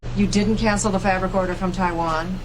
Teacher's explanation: the accent is in the first syllable corresponding to Fab